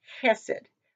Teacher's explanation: in the original is just hesed with the accent on the first syllable